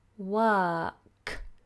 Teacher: my tongue stayed flat because it's a silent R we don't pronounce the R